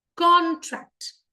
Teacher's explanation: And here, जो पहला है CON, इसको हमने स्ट्रेस किया है.